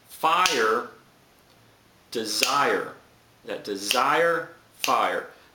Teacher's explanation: The second syllable of desire is stressed, and it goes with the fire. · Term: masculine rhyme